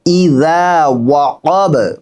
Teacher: এখানেও কিন্তু শেষে বায়ে কলকলা হয়েছে